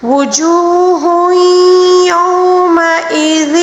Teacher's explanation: تنوین کے بعد جب بھی یا آ جائے تو اس کو ادغام مع الغنہ کہا جاتا ہے، یعنی کہ ہم نے غنے کے ساتھ ملا کر پڑھنا ہوگا